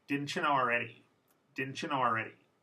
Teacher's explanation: When T and Y are next to each other in informal English, they become a ch sound.